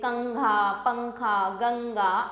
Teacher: इन वर्णों के उच्चारण में हवा केवल नाक से निकलती है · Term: अनुस्वार